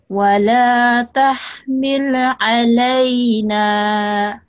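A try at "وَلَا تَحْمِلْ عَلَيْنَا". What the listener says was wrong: Milnya jangan dikol-kolakan.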